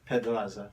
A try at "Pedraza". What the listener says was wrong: You got to roll the R. Make sure you roll the R.